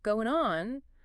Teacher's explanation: Between go and on, we might add a tiny W sound. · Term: intrusive linking